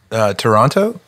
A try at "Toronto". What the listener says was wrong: You say the T. We say Toronto. We don't say the second T, and that's how you know someone's not from there.